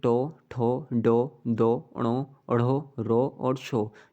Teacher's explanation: मूर्धन्य व्यंजन का जो उच्चारण होता है वह जीभ के अग्र भाग द्वारा होता है। मूर्धा यानी कि तालु का बीच वाला ऊपर का कठोर भाग, मूर्धा जब तालु के बीच वाला जो तालु का जो बीच वाला ऊपर का कठोर भाग होता है उसे स्पर्श करती है, तो इसका उच्चारण होता है।